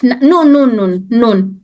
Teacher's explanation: जब नून की आवाज निकलती है तो उसमें नाक भी इन्वॉल्व हो जाती है, यानी हमारी नाक से भी आवाज निकलती है नून को अदा करते वक्त में।